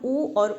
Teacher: ऊ और ऊ का जो उच्चारण स्थान है वो होता है ओष्ठ। ये आपको बोल करके भी, उच्चारण करके भी पता चल सकता है।